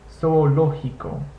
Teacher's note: Notice the G also makes the English H sound